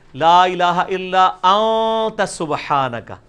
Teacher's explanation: اخفا اسے کہتے ہیں کہ خفی کر کے پڑھ رہے ہیں, نون پورا واضح نہیں کر رہے